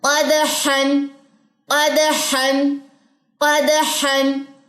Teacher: اب قاف بھی موٹا, دال باریک